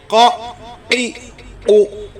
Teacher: جب زبان کی جڑ اس کوے کے حلق کی جانب والے تالو سے لگتی ہے تو قاف ادا ہوتا ہے